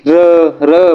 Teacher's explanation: र वर्णाचा उच्चार करताना कंपन होते म्हणून त्याला कंपन वर्ण म्हणतात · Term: कंपित वर्ण